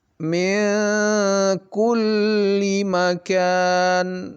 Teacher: min tidak dibaca min tetapi ming, ya. Hampir masuk dia. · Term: ikhfa